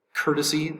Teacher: uh word number seven is courtesy courtesy three syllables courtesy courtesy accent is over the first syllable